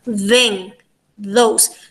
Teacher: So our tongue tip is touching our teeth. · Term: interdental sound